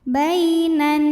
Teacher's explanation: Kemudian ada hukum alif lam namanya alif lam syamsiyah karena alif lam menghadapi huruf syamsiyah yaitu huruf nun, maka alif lam tidak dibaca